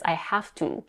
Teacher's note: Even though she's super quick, she still keeps the pure vowel to.